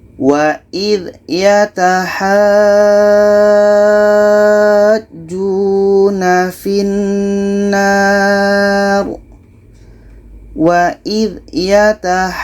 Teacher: Cara bacanya ha ini kita panjangkan 6 harakat baru masuk ke huruf ja. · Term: mad lazim kilmi mutsaqqal